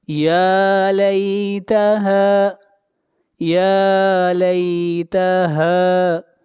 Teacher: آگے بڑھیے آیت نمبر 27 یا لیتہا یا لیتہا، یا کے اوپر کھڑی زبر ہے، یا کو کھینچ کر پڑھیں گے ایک الف کے برابر، اور ہا کو بھی کھینچ کر پڑھیں گے ایک الف کے برابر، یہاں پر الف مدہ ہے